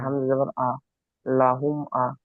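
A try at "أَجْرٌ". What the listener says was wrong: না হামজা যাবার আ নয়, হামজাটা গিয়ে কার সঙ্গে যুক্ত হবে?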